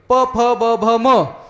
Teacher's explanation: प, फ, ब, भ, म हे उच्चार करत असताना ओठाला चिकटल्याशिवाय ह्याचा उच्चार होत नाही